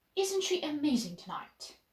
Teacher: and use a falling intonation